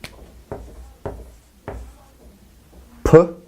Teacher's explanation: is a voiceless bilabial stop